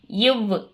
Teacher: மேல்வாயை கீழ் உதடு பொருந்துவதால் பிறக்கிறது